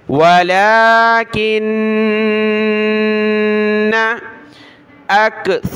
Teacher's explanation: नून पर हमने गुन्ना करना है क्योंकि ऊपर ये तशदीद है तो नाक में आवाज़ पैदा होगी। वलाकिन्ना अक्सरन्नासी, हमज़ा काफ ज़बर अक, सा पर ज़बान की नोक निकालें दांतों से बाहर, नरमी के साथ पढ़ना है।